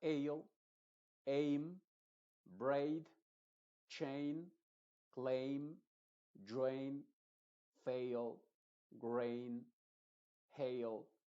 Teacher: solamente se pronuncia la a con su sonido original y la i es completamente muda